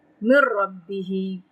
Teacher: فتلقى یعنی منہ بھر کے پڑھیں گے، تفخیم کریں گے اور اس کی آواز کو لمبا کریں گے ہم 3 سے 4 حرکت. من ربه را پہ تفخیم کریں گے اور شد پڑی ہے تو را کو مضبوطی سے پکڑ کے پڑھیں گے